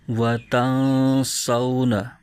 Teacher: ناظرین، نون ساکن یا تنوین کے بعد حروف اخفا میں سے کوئی حرف آ جائے تو وہاں پر اخفا کا قاعدہ ہوتا ہے، وہاں پر غنہ کر کے پڑھتے ہیں۔ تو یہاں نون ساکن کے بعد سین آ رہا ہے تو سین حروف اخفا میں سے ہے، تو لہٰذا یہاں اخفا کا قاعدہ ہو رہا ہے اور یہاں غنہ کر کے پڑھ رہے ہیں